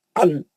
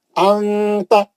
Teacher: نون کی آواز کو چھپا کے ناک سے پڑھنا ہے، نون کی آواز کو ظاہر ہونے نہیں دینا. ان بولے تو نون ظاہر ہوتا، ان نون کلین نون آ جاتا، کلین نون نہیں آنے دینا. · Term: اخفا